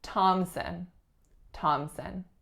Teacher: no P sound so that P is entirely silent there are two syllables the winner is on the first the sound that the winner makes is aa and the second syllable is a schwa · there is no P sound, so that P is entirely silent. There are 2 syllables.